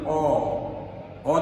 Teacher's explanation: অ যখন আমরা বলি, আমার চোয়ালের দিকে লক্ষ্য করবে, অ বলতে গেলে এই চোয়ালটা বেশি ফাঁকা হয়ে যায়, ঠিক ডিমের মতো হয়ে যাবে। · ঠোঁট তেমন বাঁকা বা গোল হয় না, ঠোঁট তেমন বাঁকা বা গোল হয় না। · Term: বিবৃত বা স্বাভাবিক উচ্চারণ